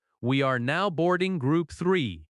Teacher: The important words are now, boarding, group, and the number. In natural American speech, we are often reduces to we're.